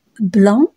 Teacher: la bouche ouverte les lèvres arrondie la langue au milieu l'air passe par la bouche et par le nez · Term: voyelle nasale